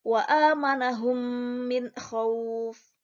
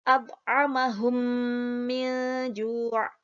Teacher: Mim sukun bertemu dengan huruf mim. Itu dinamakan dengan idgham mimi.